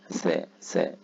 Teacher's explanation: حرف الثاء من الحروف من حروف طرف اللسان عندما يلامس طرف اللسان ما يحازيه من الاسنان العليا ثاء ثاء يبقى طرف اللسان لابد بد من ملامسه اطراف الثنايا